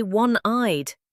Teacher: We say one-eyed, a W sound, not a vowel.